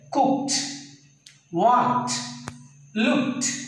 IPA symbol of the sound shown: t